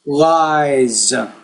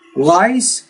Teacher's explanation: The Z is a voice consonant, which means the vowel sound before it will be longer.